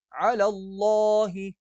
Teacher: اللہ کا نام موٹا پڑھا جائے گا